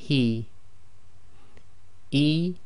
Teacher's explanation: this is a soft ha coming from the bottom of the throat